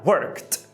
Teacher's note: trabalhou no passado é com o T, porque o K é desvozeado.